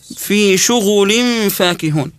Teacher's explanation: الغين مضمومه ضمها في شغل بروايه شعبه احنا نسكن فيها الغين